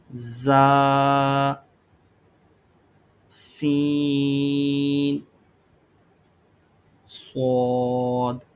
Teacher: یہ زبان کی نوک اور دونوں دانتوں کے اندرونی کنارے سے ادا ہوتے ہیں · اور ان میں سیٹی کی آواز بھی آنی چاہیے ان تین حروف میں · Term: حروف صفیریہ